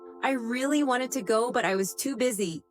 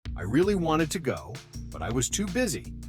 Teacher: the important words wanted and too busy are stressed while I really and to go are softer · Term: Natural Rhythm